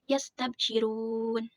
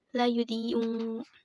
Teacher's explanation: Cara membacanya harus dipanjangkan satu alif atau dua harakat.